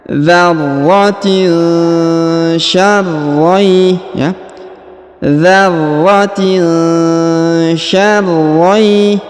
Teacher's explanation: huruf tanwin in bertemu dengan sya bertemu dengan huruf sya, maka didengungkan dan disamarkan